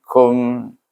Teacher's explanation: maka kita baca dengan izhar syafawi kum dengan tutup bibir